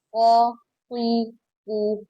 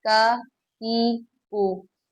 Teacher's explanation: دیکھا آپ نے، ہم نے قوف میں اور کاف میں فرق کیا، مطلب قوف کو موٹا پڑا، قوف قی کو، اور کاف کو باریک پڑھا، کا کی کو۔ قوف کون سا ہے؟